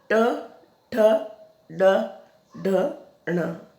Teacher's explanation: जीभ अपने आप स्वतः ही मुड़ जाती है अंदर की तरफ, है ना, स्वतः ही अंदर की तरफ मुड़ जाती है आपकी जीभ।